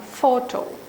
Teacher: for photo, for a disyllabic word, stress is on the first syllable